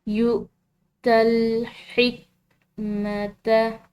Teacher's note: یہاں پر ہم نے واو کو نہیں حمزہ کو ادا کرنا ہے